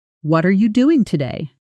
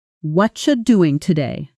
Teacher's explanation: It often sounds more like, "Whatcha doing today?" The words what and are and you blend into something closer to whatcha. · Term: connected speech